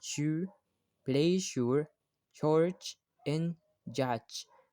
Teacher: Next, we have the post-alveolar or palatal alveolar sound sh, j, ch, and j. Your tongue moves a little further back to create these sh and ch sounds.